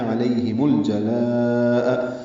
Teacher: لام ساکن پہ اظہار ہے، لا پہ مد متصل ہے